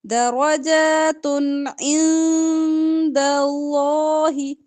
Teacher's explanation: پیش کی تنوین ہے اس کے بعد آئین آ رہا ہے تنوین کے بعد آئین آ جائے حروف ہلکی میں سے تو اظہار ہوگا